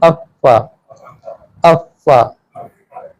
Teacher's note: ये एक नीचे के होंठ ऊपर के दांत मिलते हैं तो फा अदा होती है। अफ़्फ़ा, बहुत एहतमाम की जरूरत नहीं है, नॉर्मल अफ़्फ़ा अफ़्फ़ा।